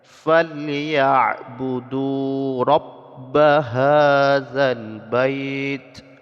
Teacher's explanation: mad asli harakat dhammah bertemu dengan waw sukun, mad asli panjang 2 harakat. Alif yang letak setelah waw sukun mad tidak dianggap, jadi tidak dibaca.